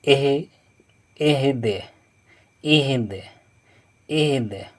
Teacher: حمزہ، ہا زیر ای، دال زیر دی، دی، دی، اور جب وقف کریں گے تو دال کو اوپر جزم لگا دیں گے، اور اس کے بعد دال پر قطب و جدین میں سے ہے یعنی قلقلہ کرنا ہوگا، جزم دال پر لگائیں گے تو اہد، اہد، اہد۔